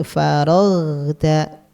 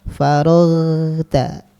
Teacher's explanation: ghain sukun jangan mantul ya, tapi faraghta. Dia dialirkan suaranya. Faraghta. Nah, wa ila rabbika farghab.